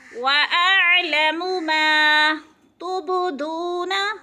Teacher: تب پہ قلقلہ ہو رہا ہے، حروف قلقلہ میں سے ہے، با کو ہلا کر پڑھنا ہے